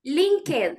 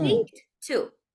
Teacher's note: ed after a K sounds like a T